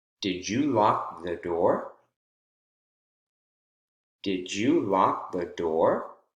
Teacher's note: door, which is the focus word, the most important word in the sentence, has rising intonation, of course, and then also because it's at the very end of the sentence, or in this case, a question.